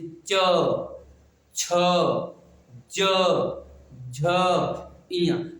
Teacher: जब हम पढ़ते हैं इनको तो जीभ हमारे ऊपरे तलवे से स्पर्श करती है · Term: तालव्य